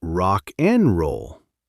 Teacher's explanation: The D in and just gives up and goes home. And the K in rock just grabs the N and runs with it.